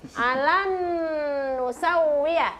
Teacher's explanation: Balaqirina ala anusau an ditahan dua ketukan. Nun nun sukun bertemu dengan nun tasdid ya. Jadi itu harus didengungkan, ditahan selama dua harakat atau dua detik